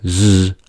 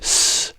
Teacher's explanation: when we say /z/, there is a vibration, but when we say /s/, there is no vibration.